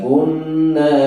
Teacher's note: kunna nunnya itu panjangnya 2 ketukan